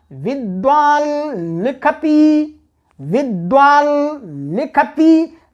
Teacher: ल को अनुनासिक बोलना है, ई को अनुनासिक नहीं बोलना है। ये ली का जो ई है वो अनुनासिक नहीं है, ये गलत उदाहरण है।